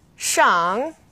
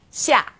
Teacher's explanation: the initial SH is pronounced like sh is in English. X is somewhere in the middle.